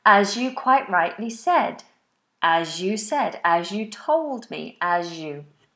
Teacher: So the S regularly sounds like a Z depending on what's following it or what it's after. As you, it becomes a Z in this case. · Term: Z sound